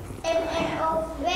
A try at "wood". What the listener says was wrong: It's not an M, it's a W. Wood. Wood. It's a D, D at the end. Wood. Or I guess for you, a D would be this. Wood. Spelled like food, but with a W. Wood.